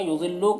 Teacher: ضاد کو پر پڑھنا ہے، لو میں واو مدہ ہے